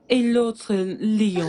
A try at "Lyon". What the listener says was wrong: Tu n'as pas besoin de faire comme moi avec les lèvres. Juste prononce Lyon.